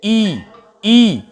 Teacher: ई के उच्चारण में हमारा मुख द्वार लगभग लगभग बंद रहता है